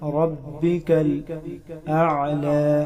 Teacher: را پر زبر ہے، اس کو پر کر کے پڑھیں گے